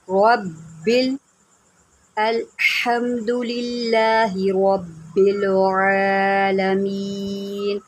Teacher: تو یہاں پر را کے اوپر زبر ہے، رب بل، با کے اوپر ذرا جماؤ سے پڑھیں گے کیونکہ با کے اوپر تشدید ہے